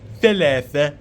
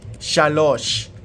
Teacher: The Arabic word for three, thalatha, is related to the Hebrew number shalosh. In some cases, the th sound becomes a sh sound